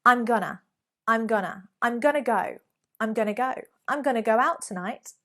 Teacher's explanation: Very often I hear people make the mistake by saying, I'm gonna to go. If you've used gonna, you've already added the to. It's hidden there in the schwa sound.